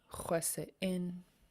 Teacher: Yeah, it's a glottal stop. It tells you to stop the air in your throat.